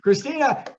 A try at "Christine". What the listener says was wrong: What's so funny is that you got Fecati correct, but it's Christine, not Christina.